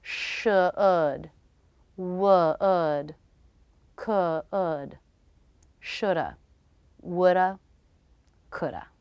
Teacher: note that the L is silent in these words and they all have the bowel as in book where the